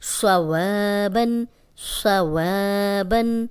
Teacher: خالی الف ہے پیچھے واو پہ زبر ہے تو اس کو لمبا کریں گے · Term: الف مدہ